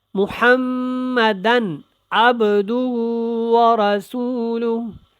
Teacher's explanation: اب با کے اوپر قلقلہ اور با ساکن